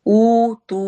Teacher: واو مدہ دونوں پہ ایک جتنے لمبے ہوں گے